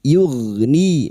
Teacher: huruf gain sukun. Hati-hati jangan dipantulkan. Huruf gain yugni ni kasrah di sukun dua harakat mad thabi'i.